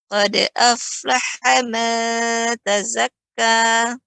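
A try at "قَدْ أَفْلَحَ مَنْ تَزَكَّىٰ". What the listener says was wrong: Ya, bagus.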